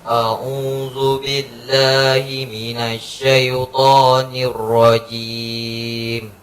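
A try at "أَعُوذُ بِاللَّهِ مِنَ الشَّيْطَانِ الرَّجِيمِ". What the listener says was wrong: Sya-nya lebih kuat kan? Coba.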